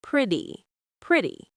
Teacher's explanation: Pay attention to the word pretty. We do not hit the t sound very hard. It sounds more like a soft d.